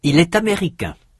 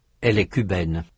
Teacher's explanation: In the masculine, the vowel is nasal. In the feminine, it is not. In spelling, the feminine forms also have a final e that the masculine forms do not.